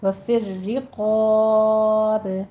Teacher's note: با پہ اگر آپ نے وقف کرنا ہے تو پھر یہاں پہ با پہ قلقلہ پیدا ہو جائے گا